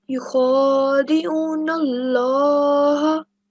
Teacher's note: Not stretch, but you have to pronounce that with a fuller mouth. So you round it off a bit because this is the Lam al-Jalala, because it's preceded by a fatha.